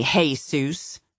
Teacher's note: calling him Hay Zeus, emphasis loud on the first syllable